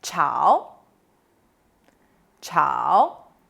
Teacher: it's a third tone which means stir fry